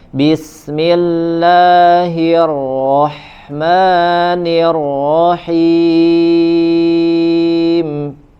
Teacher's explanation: rnya getaran tidak terlalu banyak di huruf rnya bertasdid